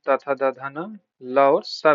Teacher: जिनका उच्चारण ऊपर के दांतों पर जीभ लगने से होता है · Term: दंत ध्वनियां